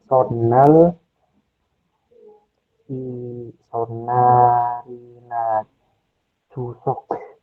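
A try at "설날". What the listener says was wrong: Berarti pakai N ya. Ini masih pakai N ya? Jawabannya adalah solal. Dibacanya adalah sol seperti ini. Sol, lal.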